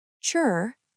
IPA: tʃr